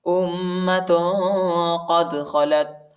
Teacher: حمزہ کو میم کے ساتھ ملائیں گے اور غنہ کریں گے